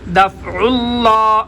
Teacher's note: لفظ اللہ کا لام موٹا کیونکہ ما قبل عین کے اوپر پیش ہے